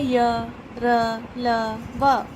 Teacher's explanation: ऐसे व्यंजन के उच्चारण में जीभ मुख के किसी भी भाग को पूर्णतः स्पर्श नहीं करती। मतलब हमारी जीभ जो है मुंह के अंदर के किसी भी भाग को पूरी तरह से स्पर्श नहीं करती, हल्का सा स्पर्श करती है। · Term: अंतस्थ व्यंजन